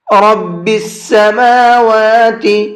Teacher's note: میم کو بھی اور واو کو بھی دونوں کو کھینچ کر کے پڑھیں گے۔ یہاں بھی عام طور پر لوگوں سے غلطی ہوتی ہے، سماواتی پڑھتے ہیں اس کو، تو یہ سماواتی نہیں ہے، سماواتی ہے۔